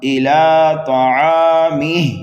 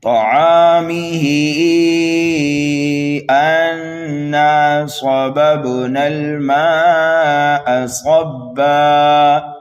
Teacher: اب ہا کو ہم کھینچیں گے 2 سے 2.5 الف کے برابر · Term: مد منفصل